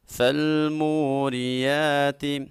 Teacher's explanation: فالموریات، واو ساکن سے پہلے حرف کے اوپر پیش آ جائے واو مدہ ہوتی ہے، واو مدہ کو ایک الف کے برابر لمبا کیا جاتا ہے، اور جب را کے نیچے زیر آ جائے را کو باریک پڑھا جاتا ہے۔